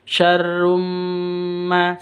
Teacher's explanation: tanwin bertemu dengan mim, masuk dengan dengung, berarti didengungkan. Syarrumma, seperti itu.